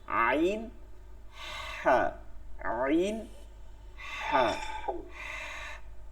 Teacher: গলার মাঝখান, কণ্ঠনালী মাঝখান থেকে উচ্চারিত হয়